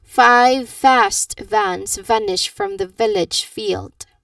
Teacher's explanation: teeth on lip sound. Again, teeth on lip sound. Upper teeth, lower lip.